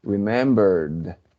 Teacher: Remember, right? El verbo remember termina en un sonido R, que es remember, lo que quiere decir que termina en un sonido con voz, En ese caso, entonces, las letras ED sonarán como una D, como cuando decimos good.